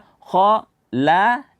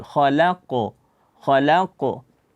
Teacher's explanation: ko tebal lam tipis dan qf itu tebal maka dibaca k la kemudian baru qaf yang tebal khalaqo khalaqo